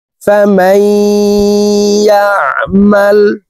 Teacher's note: এই মিম তাসদিদওয়ালা ইয়ার সাথে গুন্নার সহিত মিলাইয়া পড়ব, মাঝখানে জজমওয়ালা নুন বাদ পড়ে যাবে। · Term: ইদগামে বা গুন্নাহ